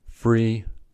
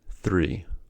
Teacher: F and th are voiceless fricatives. They differ only at the place of articulation. FA is produced with upper teeth and lower lip and thaw is produced with the tongue between the teeth.